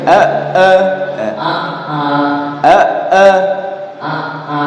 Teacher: A-nya yang kedua jangan dipanjangin ya.